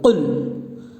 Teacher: یہ بڑی قاف ہے، اس کو موٹی آواز کے ساتھ پڑھیں گے، یعنی پر کر کے پڑھیں گے